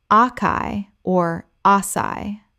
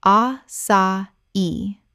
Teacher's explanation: Correct pronunciation: a-sa-i. Three syllables. The accent on the final I tells you to stress the last syllable.